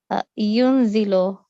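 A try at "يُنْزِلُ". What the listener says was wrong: MashaAllah. Excellent.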